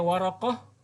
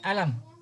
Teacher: qaf sering qaf itu dibaca hamzah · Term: Qafnya diganti hamzah